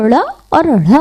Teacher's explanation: जब जबान तिरछी होकर तालू से झटके से स्पर्श करती है तो ड़ और ढ़ बनते हैं